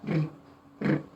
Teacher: Front part of the tongue, touch it to upper bridge and vibrate it